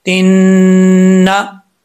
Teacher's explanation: ता को जब नून से मिलाएंगे तो बीच में अलिफ लाम गिर जाएगा, नून के ऊपर शद है, एक अलिफ की मिकदार गुन्ना करेंगे।